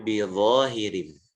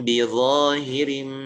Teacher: Yang pertama adalah kita menutup kedua bibir, kemudian menyempurnakan ghunnahnya, kemudian menekan untuk mengucapkan huruf ba. Ya. Ditutup dan bukan dibuka. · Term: ikhfa syafawi